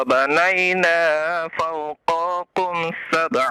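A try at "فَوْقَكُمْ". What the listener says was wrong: Fauqakum. Qafnya jangan dipanjangkan.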